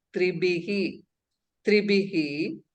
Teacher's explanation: And that Bakara should be well pronounced. Mahaprana Bakara. And Visarga should be pronounced Tribihi.